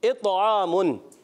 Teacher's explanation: तौ में कलकला होगा और यहाँ पर आवाज़ मोटी भी रखनी है। तौ एक्स्ट्रा मोटे हरूफ में से भी है।